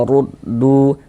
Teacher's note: Maka huruf ro dibaca tafkhim, dibaca tebal sehingga dengan menaikkan pakal lidah kita ketika kita mengucapkannya.